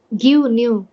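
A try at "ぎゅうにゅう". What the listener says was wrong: ಹಾಂ, ಗಿವ್ ನ್ಯೂ. ಇದು ನುಂಗ್ಬಿಟ್ರಿ ನೀವು ಕೊನೆಗೆ. ಹಾಂ, ನೀವು ಹಿಂಗೆ ರೈಸ್ ಮಾಡಿ ಹಿಂಗೆ ಬರಬೇಕು, ಹಿಂಗೆ ಹೋಗ್ಬೇಕು.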